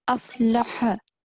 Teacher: Ha should be as short as the lam with the fatha stroke.